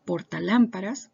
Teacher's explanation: Lámparas es netamente una palabra esdrújula porque se acentúa, ¿cierto? En la antepenúltima vocal.